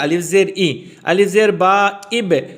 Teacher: آواز باریک ہو جائے گی زیر کی وجہ سے